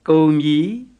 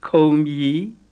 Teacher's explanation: it's important to differentiate the plain K from the aspirated K, because if you say kombi with a plain K, you're saying it's all gone, and if you say kombi with an aspirated K, you're saying it has started jumping.